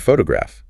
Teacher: The stress is on the first syllable, P-H-O to graph.